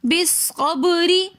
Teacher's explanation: بالصبر میں با حروف قلقلہ میں سے کلمے کے درمیان میں ساکن حالت میں آ رہا ہے تو اس لیے ہم یہاں پر پڑھیں گے بالصبر, اور را کے نیچے زیر ہے تو اس لیے اس را کو ہم باریک کر کے پڑھیں گے